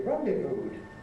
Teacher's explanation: the last sound is a voiced sound, so for the past tense we have D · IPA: [ ˈrɒndɪvuːd ]